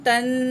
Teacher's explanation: تا زبر نون، تن، نون ساکن کے بعد فا حروف اخفا میں سے ہے، نون کی آواز کو ناک میں چھپا کر پڑھیں گے